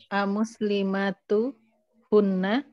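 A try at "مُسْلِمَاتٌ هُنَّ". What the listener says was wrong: Ayo, muslimatun. Ya, nanti bertanwin karena tidak ada yang tidak ada yang merubah dia dari aslinya bertanwin. Nah, muslimatun hunna.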